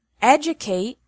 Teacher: the verb educate has the stress on the first syllable